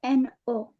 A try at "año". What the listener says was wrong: Enye. It's not N. It's enye. This one. N with a crown. special letter. the voice for this letter is enye. So you call it el año, the year.